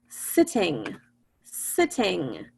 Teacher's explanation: We don't hear the two T's at different times. We hear it at the same time.